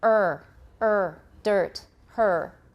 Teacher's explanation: r like in american english and then you retroflex it because they're very similar except in american english we have rounding